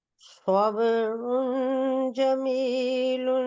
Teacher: سواد موٹا ہے، تھوڑا مفخم پڑھیے گا